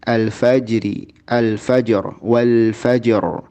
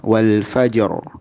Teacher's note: Kalau berhenti ra-nya tebal ya